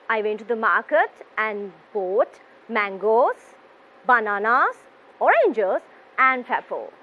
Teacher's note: so when it comes to lists you have this rising rising rising and falling intonation